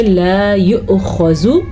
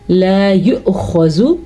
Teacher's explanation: حمزہ ساکن سے پہلے پیش ہے تو یہاں پہ جھٹکے کی کیفیت پیدا ہوگی تو ہم اس کو ادا کریں گے لا یؤخذ، جھٹکا.